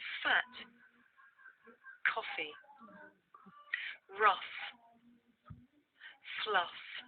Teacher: This is a voiceless consonant. You can hear it at the beginning of the word fat, in the middle of the word coffee, at the end of the word rough, and at the beginning and end of the word fluff.